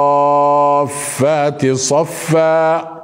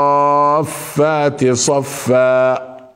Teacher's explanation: صفا هنا نمدها وان شاء الله سنذكر لماذا مددناها بهذه الطريقه الالف وهي الالف المفخمه فخمها لاجل الصاد التي قبلها لان الصاد حرف استعلاء